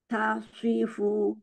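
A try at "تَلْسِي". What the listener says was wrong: Jangan jangan pakai bibir. Talsi, talsi, talsi. Hurufnya dari huruf sin, coba. Si. Talsi.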